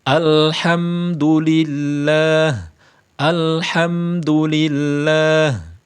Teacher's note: Yang benar tentunya tidak menyertakan sifat qalqalah pada lam sukun.